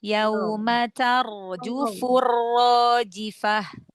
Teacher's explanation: Roknya dibaca tafhim. Tar, angkat pangkal lidah.